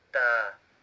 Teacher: Tip of the tongue, it goes to the gums, upper central two teeth in the middle